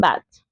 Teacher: The vowel bat is shorter because it comes before a voiceless consonant, the letter t.